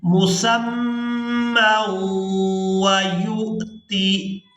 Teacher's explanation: میم کو واو مشدد کے ساتھ ملاتے ہوئے غنہ کے ساتھ ادائیگی کریں گے